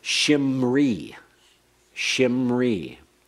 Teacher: The first schwa becomes a hirik. So that ends up with shimri.